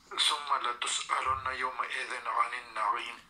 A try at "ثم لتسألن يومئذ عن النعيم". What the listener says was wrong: ثم کے اوپر اب غنہ نہیں کر رہے یہاں پہ جو ابھی آخر میں ہم نے پڑھا. ثم لتسأل.